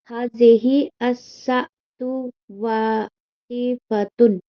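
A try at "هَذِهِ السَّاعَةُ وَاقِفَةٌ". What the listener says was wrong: देखिए हाज़िही अस मत पढ़िए क्योंकि देखिए जिस पर एराब लगा हो उस चीज़ को पढ़िए, जिस पे नहीं लगा है उसको छोड़ दीजिए, ठीक है?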